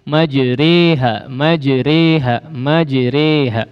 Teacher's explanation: Ya, maksudnya adalah fathahnya dimiringkan, diimalahkan. Ya, yang cenderung kepada harakat kasrah, sehingga dibaca imalah disebutnya, harakat miring · aliful mad yang dimiringkan ke ya mad, sehingga dibaca seperti e, ya, menyerupai e, ya, tidak betul-betul e, ya, tapi e, ya.